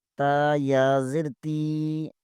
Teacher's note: تا زیر کے آگے یائی مدہ ہے، اسے 1 الف کے برابر کھینچیں گے